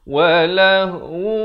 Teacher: Sebab tanwin bertemu waw dibacakan dengan idgham bi gunnah dengung 2 harakat